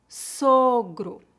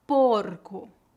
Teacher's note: Eu estou me referindo sempre à penúltima sílaba, ok? A letra O em final de palavras é comumente pronunciada como um U fraco, a menos que tenha um acento na palavra.